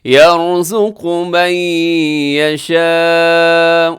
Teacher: یشاء مد متصل، اور اسے 4 سیکنڈ تک لمبا کیجیے گا